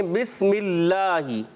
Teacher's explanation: بسم اللہ، اللہ کے لام سے پہلے زیر آنے کی وجہ سے یہ باریک ہوگا، اس کو موٹا بسم اللہ ایسے نہیں پڑھنا۔